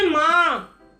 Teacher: अनुनासिक इसलिए कहा जाता है क्योंकि ये शब्द नाक और मुंह दोनों से बोले जाते हैं। जैसे माँ, नाक और मुंह दोनों से इसकी साउंड आती है